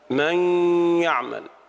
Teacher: النون ذهبت ولكن بقيت الغنة الدالة عليها، فنقول إدغام ناقص